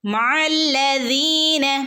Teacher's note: നടുക്കു നിന്നാണ് വരുന്നത് മല്ലീന ലാമിന് ശ്രദ്ധയണ്ട് ലാമിനെ ഒന്ന് കനപ്പിച്ചു കൊടുക്കുക അതുപോലെ യ മദ്ഉണ്ട് രണ്ടനക്കെ നീട്ടി കൊടുക്കുക